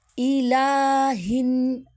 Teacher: حمزہ کو ہم سختی سے پڑھیں گے، لام کو باریک پڑھیں گے اور منہ کھول کر ادا کریں گے. ہن، نون مشدد کا غنہ اور الف مدہ.